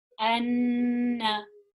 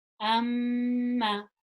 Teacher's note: That basically whenever you see a noon with a shadda on it or a mim with a shadda on it, we pronounce it with gunna. And gunna is the nasalization or the sound that comes from above the nose